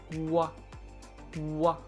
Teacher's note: We hold the sound at the back of your throat, then we form a circle with the lips, and then we release the whole holding position and vocalize at the same time. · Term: GW sound